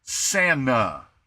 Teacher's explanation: So we just ignore the t part and we go Santa, because then all that does is your tongue just kind of flops forward. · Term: lazy talking